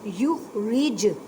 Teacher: واحد فادعو، دال ساکن ہے اس وجہ سے کلکلا کریں، کلکلا کا مطلب ہے ہلا کر پڑھنا، فد نہیں کہنا، فادعو لنا ربک یخرج، اب را کو باریک پڑھیں کیونکہ را کے نیچے زیر ہے، اب جیم ساکن ہے تو کلکلا کریں، کلکلا کا مطلب ہے ہلا کر پڑھنا